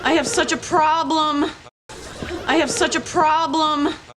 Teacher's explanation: there's a bit of stress on such, so it's a bit more clear